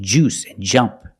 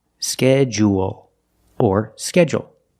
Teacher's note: we notice the DU making the J sound, like in juice and jump